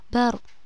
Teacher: Nah, bar ini termasuk hukum bacaan ro tafhim. Ketika bar itu harus dibaca tebal ro-nya.